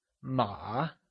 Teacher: horse translates to MA and is said with a falling rising tone also known as the third tone